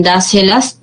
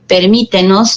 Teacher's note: la mayor fuerza de voz recae en la antepenúltima sílaba